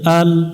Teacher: আল্লাহ শব্দের ডাইনে জবর আছে এজন্য লামটা মোটা করে পড়তে হবে ল পড়তে হবে লা পড়া যাবে না শাপলা ফুল দেখে মোটা